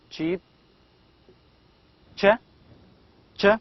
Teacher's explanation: There is a t before sh, so it becomes as ch, cheap. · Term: Affricates